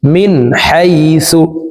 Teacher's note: নুন সাকিনের পরে ইজহারের হারফ হা আসছে এই কারণে এ নুন সাকিনকে গুন্না ছাড়া স্পষ্ট করিয়া পড়ব